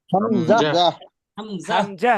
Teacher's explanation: হামজা টান দেয়া যাবে না হামজা দ্রুত পড়তে হবে